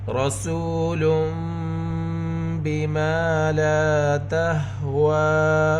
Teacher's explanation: واو کے اوپر کھڑی حرکت ہے، واو کی آواز کو 2 حرکت کے برابر کھینچ کر پڑھیں گے